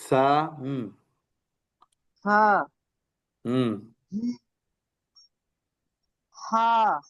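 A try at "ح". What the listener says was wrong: এত শক্ত কেন? হা কেন? এত শক্ত কেন? জিম হা জিম এত শক্ত কেন? স্বাভাবিকভাবে বলেন স্বাভাবিকভাবে।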